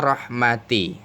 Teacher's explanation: rohnya menyandang harokat fathah, maka harus disebut tafkhim